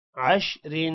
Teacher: را کو یہاں پر بھی باریک پڑھیں گے دو زیر کی وجہ سے